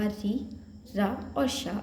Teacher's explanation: टा वर्ग के अलावा री, रा और शा, इन तीनों का उच्चारण स्थान भी मूर्धा होता है